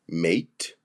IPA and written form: meɪt (Mate)